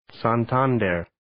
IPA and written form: ,sæn'tændɝr (Santander)